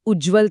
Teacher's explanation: इथे त पुढे जर ज किंवा झ आला तर त सा थेट ज बनून जातो. उत आणि ज्वलमधून उज्ज्वल तयार होतो.